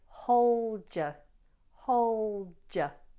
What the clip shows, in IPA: həʊldjə